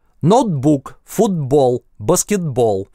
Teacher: А на месте /t/ перед согласным, на стыке слов или в сложных словах /t/ глоттализуется.